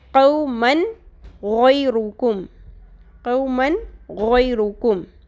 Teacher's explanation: پھر تنوین کی ایگزامپل ہے، جس کے بعد غوئن آ رہا ہے تو ہم نے تنوین کی آواز کو کمپلیٹ کر کے پڑھنا ہے، مکمل کر کے، یعنی کہ بالکل ظاہر کر کے